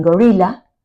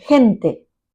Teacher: The voiced velar sound G, as in gorilla, and the voiceless velar fricative sound H, as in gente